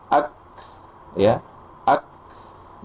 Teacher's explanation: Jadi jelas sekali setelah tertahan suaranya ada hembusan nafas. · Jadi ketika mengucapkan kaf itu kaf sukun ak, jadi tertahan dulu suaranya, baru ada aliran hamsnya, udaranya atau nafasnya setelahnya